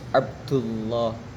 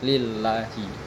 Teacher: lam lafaz jalalah ketika didahului harakat fathah atau dhamma itu dibaca tebal